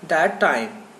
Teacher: we pronounce only one time the two words share sound